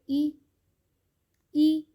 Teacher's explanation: تو آواز نیچے کو جا رہی ہے، آواز نیچے کو گھر رہی ہے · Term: زیر